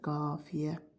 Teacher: A saiti uzun tələffüz olunacaqdır. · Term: uzun sait